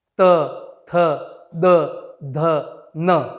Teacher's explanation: और दंते दांतों से त, थ, द, ध, न